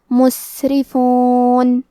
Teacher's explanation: کیونکہ را کے نیچے زیر ہے تو یہاں را کا حکم ہے ترقیق، ہم حرف الرا کو پتلی آواز میں پڑھیں گے